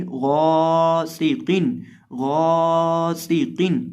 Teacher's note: ये जो गैन है इसके साथ अलिफ है, इस वजह से अलिफ की वजह से हम इसको लंबा करके पढ़ेंगे। और इसी तरह सीन और कॉफ को हम बगैर लंबा किए पढ़ेंगे।